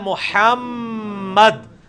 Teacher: میم اور نون دو ایسے ہیں جو غنہ بھی ہوتے ہیں, یعنی آواز ناک میں لے کے جائی جاتی ہے. محمد, میم اور غنہ کی مقدار کتنی ہوتی ہے, ایک الف.